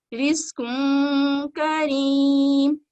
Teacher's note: غنہ کرنے کے لیے ناک سے جو آواز کا جو فلو ہوتا ہے وہ ناک سے فلو ڈاؤن ہوتا ہے، نیچے کی طرف آتا ہے اور نون کو مکمل ادا نہیں کرتے بلکہ نون کو چھپاتے ہیں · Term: اخفا